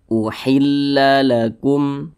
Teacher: lam bukan huruf ba bukan huruf mim berarti hukumnya izhar syafawi maka baca jelas tidak berdengung dibaca pendek saja